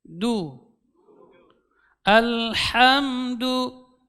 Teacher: kalau sudah ketebalan sudah terangkat lidahnya berlebihan sudah sampai di langit-langit jadi disini ujung lidahnya diusul di Pangkal gigi seri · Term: huruf Dal